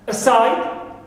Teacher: Aside as adverb or preposition, side is stressed, second is stressed.